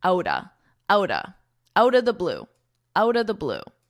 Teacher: we really combine these two words to sound like outa, outa